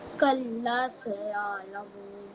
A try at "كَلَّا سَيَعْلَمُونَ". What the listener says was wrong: What about the alif madda rule? Lams, fatha, alif, la. You have to stretch the la. Say la.